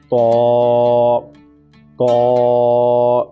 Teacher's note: اس کا جو مخرج ہے وہ زبان کی نوک اور اوپر کے دانتوں کی جڑ سے ادا ہوگا، طا، طا۔ اس کو ہم تا نہیں بولیں گے، وہ 2 نقطوں والا تا ہوگا جو کہ باریک ہے، اس کو ہم موٹا کر کے پر کر کے پڑھیں گے، طا، طا۔